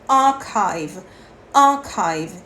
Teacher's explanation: Você vai prolongar o som do A e você não vai pronunciar o R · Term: pronúncia britânica